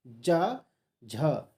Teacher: ज झ तालु में टच होती है, इसीलिए तालव्य कहते हैं।